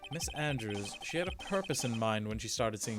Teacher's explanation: child and i give the woman a deeper voice because it's my attempt at doing like a breathy husky sexy lady voice without actually doing like the pitch it's just the tone not the pitch